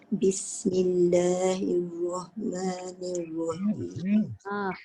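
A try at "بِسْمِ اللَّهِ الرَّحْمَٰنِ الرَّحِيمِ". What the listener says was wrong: Dia bukan Rahmanirrahim. Dia dua ha kat situ. Rahmanirrahim. Dia masuk tapi dia tak kuat tekanan dia. Dia bukan roh. Roh. Bukan roh. Kalau roh jadi ha. Rahmanirrahim. Dia kena kuat tekanan ha.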